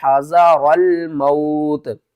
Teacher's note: وقف کی صورت میں نیچے والی جو زیر ہے اس کو ہم نے ختم کر دینا اور تا ہو جائے گی ساکن